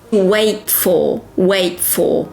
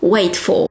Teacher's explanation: Do not emphasize the T in wait because you have another consonant, f, for.